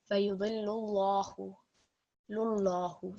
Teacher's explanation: we have lam, which has got a dhamma stroke. So according to our lam al-jalala rule, this is going to be a thick lam